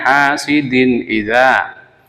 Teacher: Tanwin harus dibaca jelas karena hukumnya idhar, sebab tanwin bertemu dengan hamzah.